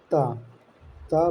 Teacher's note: त वर्ण के उच्चारण में आपकी जीवा दांत को स्पर्श करती है। इसलिए इसे दंत कहते हैं। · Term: दंत्य